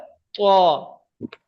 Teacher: তো মুখ গোল করে উচ্চারণ করতে হবে, তা নয় আর তোয়ে নয়, তো পড়তে হবে ত।